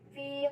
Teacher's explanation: Pada ayat tersebut terdapat hukum bacaan yaitu pada kata fi terdapat hukum bacaan yaitu matobi'i, cara bacanya itu dibaca panjang 2 harokat